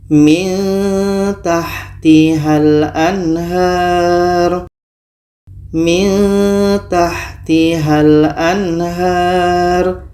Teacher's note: Di sini ada nun mati bertemu ta. Maka di sini kita baca secara ikhfa, secara samar. Dan kita dengungkan. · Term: ikhfa aqrab